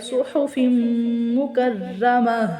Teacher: صاد کو سیٹی کے ساتھ پر ادا کریں گے